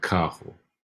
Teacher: this double R becomes a sound like a H